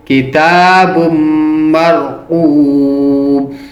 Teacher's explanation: اور جب با تنوین پیش والے کو میم مشدد کے ساتھ ملائیں گے تو اس پر غنہ کریں گے